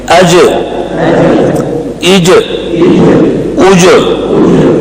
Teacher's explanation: زبان کا درمیان اوپر لگ کر واپس ہو جاتا ہے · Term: قلقلہ